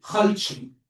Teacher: the Tripolitanian one has the tendency of ending letters with a ch instead of t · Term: Tripolitanian accent